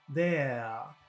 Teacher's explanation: middle that vowel sound there that's actually that's very long and in some types of English in the UK or maybe in Australia they don't pronounce the r at the end of a word